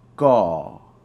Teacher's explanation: the word for also is gaw. G-A-W with a falling tone.